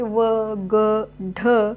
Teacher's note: व ग ढ असे जे एक अक्षरी शब्द आहेत ते शब्द एक अक्षरी शब्दातील जो शेवटचा अ आहे तो शेवटचा अ हा पूर्ण उच्चार उच्चारला जातो दीर्घ उच्चारल्या जातो